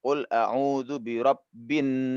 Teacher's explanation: di dalam surah an-nas ini ada kewajiban berdengung pada Nun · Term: ghunnah musyaddadah